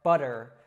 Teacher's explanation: That T sound in the middle actually warps to kind of a D sound. Now, this is very similar to the R sound in Latin languages like Spanish and Portuguese.